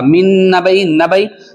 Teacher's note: نون ساکن کے بعد نون آ رہا، تو یہاں پر من میں ادغام ہو رہا